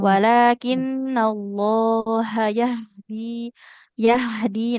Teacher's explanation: huruf ha kan punya sifat mengalirkan suara dia enggak boleh terburu buru ya